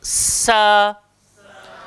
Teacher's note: Hujung lidah, langgar belakang, gigi bawah. Dan kita nak kena berdesir. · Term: sin